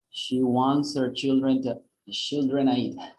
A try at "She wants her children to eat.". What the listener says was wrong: Yeah, but eat, because eat is content word, is a verb.